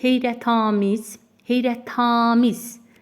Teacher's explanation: Deməli, uzanma 3-cü hecanın üzərinə düşür.